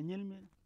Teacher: the word n̰elme or snake that begins with the palatal nasal